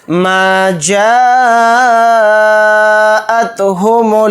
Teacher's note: پھر اسی طرح سے جیم کے ساتھ الف مدہ ہے اور الف مدہ کے بعد حمزہ اسی کلیمے میں ہے، تو اس میں مد متصل کا قاعدہ ہو رہا ہے، یعنی یہ جو اوپر ہے مد متصل ہے، اس کو 4 الف کی مقدار ہم کھینچ کر پڑھیں گے جیم الف زبر جا کے ساتھ